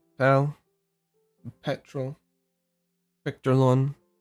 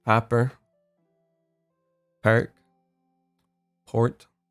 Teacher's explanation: So the broad P is a bit more pop, a bit more open. The mouth, I guess, is what I'm getting at.